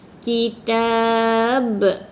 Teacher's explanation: Sebab kita waqaf, ba ni akan menjadi qalqalah kubra.